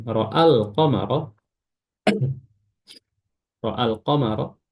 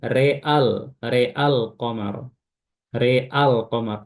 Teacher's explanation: ra-nya saja yang diimalakan. Maka dibacanya real, real qamar, real qamar, a-nya tidak.